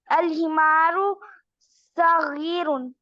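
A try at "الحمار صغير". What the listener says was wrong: सगीर, सौद को पुर करें। सगीरुन।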